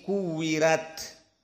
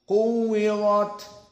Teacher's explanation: Kalau ditanya bagaimana kok muraqqaqah padahal dia fathah, jawabnya usul dari qiraah Warsh an Nafi', maka jika ra dalam keadaan fathah masih membutuhkan ungdur ila ma qablahu, lihat kepada yang sebelumnya. Maka jika yang sebelumnya kasrah seperti di sini kuwirat, maka ra dibaca tarqiq jadi kuwirat.